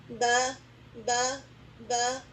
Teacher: جب دونوں ہونٹوں کا گیلا حصہ ذرا زور سے مل کر الگ ہو جاتا ہے تو حرف با ادا ہوتا ہے. ہمارے ہونٹوں کا جو اندر کا حصہ نا، جب ہم نارملی جوائن کریں اپنے ہونٹوں کو، جب آپ نے جوائن کیا ہوا تو دراصل آپ کے ہونٹوں کے گیلے حصے ملے ہوئے ہیں.